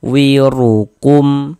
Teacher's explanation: Maka huruf ra kita baca tebal, kita baca tapkhim. Sehingganya pangkal lisan kita naik terangkat ke atas ketika kita mengucapkannya. Wirukum. Di sini ada huruf mim sukun setelahnya huruf fa. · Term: tafkhim